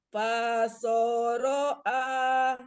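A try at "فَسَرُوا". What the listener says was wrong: Jangan diayun Mi, kalau yang pendek jangan diayun. Pasoroa. Iya, nggak boleh. A-nya panjang, boleh ngayun. Pasoroa. 2 harokat nih, bukan 2 rakaat.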